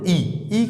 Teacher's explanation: ई ई की आवाज निकालते समय जीवा और तालू के मध्य जो है वायु घर्षण करते हुए बाहर निकलते